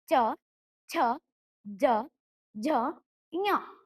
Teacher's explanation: ಚ ವರ್ಗದ ಅಕ್ಷರಗಳು ತಾಲುವಿನ ಅಂದರೆ ದವಡೆಯ ಸಹಾಯದಿಂದ ಹುಟ್ಟುವುದರಿಂದ ಅವು ತಾಲವ್ಯ ಅಕ್ಷರಗಳು